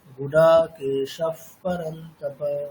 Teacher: পরে পকার থাকলে কি বলা হয়েছিল? পকার থাকলে বিসর্গের উচ্চারণটা ফকারের মতো হবে